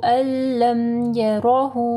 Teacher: نون ساکن کے بعد لام ہے، ادغام آ رہا ہے وداؤٹ غنہ